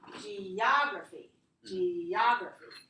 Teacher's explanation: we always put the stress on the syllable before G-R-A. So it could be igraphy or ography.